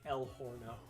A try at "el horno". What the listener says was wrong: El horno. You pronounce the H. Yes, but you don't pronounce the H, babe.